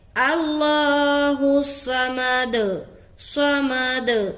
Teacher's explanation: ہا صاد پیش حس صمد صمد. دال میں قلقلہ، قلقلہ کی آواز ہمیشہ اپ یعنی کہ اوپر کی طرف کھلتی ہے